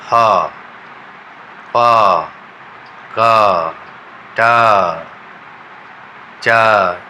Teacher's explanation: तो उसमें क्या होता है, ये जो वोकल कॉर्ड का पहला जो यहाँ पर फंक्शन कर रहा है उसमें जो हवा बाहर निकलती है तो वो बिना वाइब्रेशन किए हुए बाहर निकल जाती है और साउंड प्रोडक्शन करती है। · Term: वॉइसलेस साउंड्स